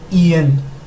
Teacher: esta se escribe IAN, pero fonéticamente no se dice como lo vemos, se dice IN. Parece como si realmente estuviéramos diciendo una E.